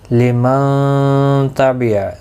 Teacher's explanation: نون ساکن کے بعد حرف اخفا کا تا آیا ہے، اخفا حقیقی ہوگا، غنہ کے ساتھ پڑھیں گے